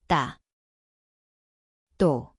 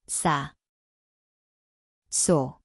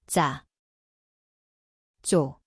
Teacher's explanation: see on pingeline, sama koht, tihedam, ilma õhuta